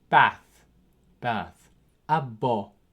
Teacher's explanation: B has two sounds, one of which, as in English B, it is a voiced sound. It occurs at the start and middle of words.